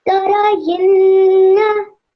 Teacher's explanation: You made sure that your fatha was 1 second, fatha and your kasra was 1 second long, and your ghunna was 2 seconds long